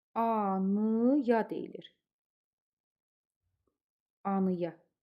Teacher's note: Anaya yazılır. Anaya deyiləndə amma anıya deyilir. Anıya. A ı-ya keçir.